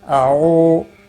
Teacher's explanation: او واو مدہ ہے، ایک الف کے برابر کھینچ کر پڑھیں گے